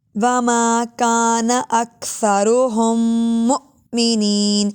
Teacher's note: كَانَ أَكْثَرُهُم مُؤْمِنِينَ، یہاں پر بھی درمیان پہلا میم ساکن ہے، ہا کو اگلے والے میم مشدد سے جوڑیں گے غنے کے ساتھ